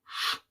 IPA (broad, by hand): ш